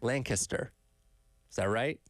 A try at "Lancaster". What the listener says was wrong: You drew it out a little bit. Like you got to shorten it, compress it a little bit.